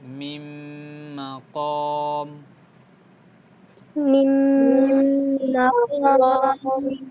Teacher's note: নুন সেকেন্ডের উচ্চারণ কিন্তু হয় না, এটা কি হয়েছে, মার্জ হয়ে গেছে। ওকে, এই জি দুইটা এই নুন সেকেন্ডের কারোর জায়গায় কি হচ্ছে, হালকা একটু গুন্না হচ্ছে, কি হচ্ছে, হালকা একটু গুন্না গুন্না, মিম মাকম।